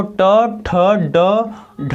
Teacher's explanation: और मूर्धन्य जो होता है वो ट ठ ड ढ र श री ये होता है मूर्धन्य, क्योंकि इनको बोलने पर हमारी जो जिह्वा है वो मुड़कर हमारे मूर्धा को स्पर्श करती है, ऊपर जो ऊपरी भाग कठोर भाग होता है उसको स्पर्श करती है, इसलिए इसको बोलते हैं मूर्धन्य।